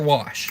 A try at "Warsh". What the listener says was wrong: Warsh. It's Warsh. It's like Worcestershire sauce. You got a warsh behind your ears. It's silent. It's the invisible R, but it's there. It's there. You enunciate it.